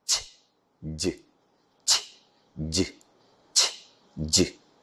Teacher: The air stream is blocked by raising the tip of the tongue to touch the back part of the teeth ridge. Teeth, back part of the teeth ridge. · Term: post-alveolar affricates